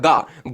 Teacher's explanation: जैसे आप गमला बोलते हो तो आपका गा है ना, गा आप बोल के देखो एक बार, गा गा बोलोगे तो आपके कंठ पर जोड़ पड़ेगा, यानी गले से आपका गा निकलेगा।